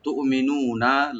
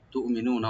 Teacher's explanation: ইন কুনতুম তুমিনুনা, হামজাকে right দিব, এখানে কলকালা হবে না, মি বলবো, তুমি নু একালে টানবেন, তুমিনুনা, লাস্টে নুনে কোনো টান নাই